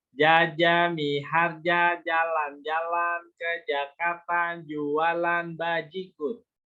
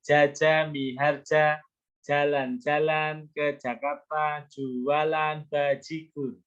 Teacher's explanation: Jadi jimnya itu tidak keluar udara.